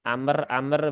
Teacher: mimnya seolah-olah dia ada kolkolahnya